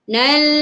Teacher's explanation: jangan lantunkan bunyi sebab huruf lam bukan huruf qalqalah